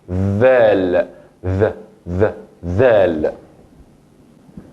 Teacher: debo siempre poner el punto de la lengua que tengo entre los dientes superiores y inferiores